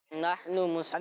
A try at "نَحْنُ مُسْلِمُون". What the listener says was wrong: یعنی اس کو جو آخری لفظ ہے نون اس کو ہم سائلنٹ کر دیں گے، یعنی اس پر زبر نہیں پڑیں. ٹھیک ہے، تو نحن مسلمون.